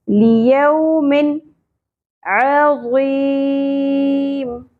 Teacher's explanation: دو زیر تنوین کے بعد حروف حلقی میں سے عین آ گیا اس لیے یہاں پر اظہار ہوگا ، اس طرح کر کے نہیں پڑھنا، ظاہر کر کے پڑھنا